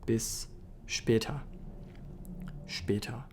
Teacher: So you can probably notice when I'm saying the S in German, it's a sh sound. It's not a s like in English. So bis später, especially when the S is at the first position there in the sentence, when it's the first letter, it'll be pronounced as a sh normally.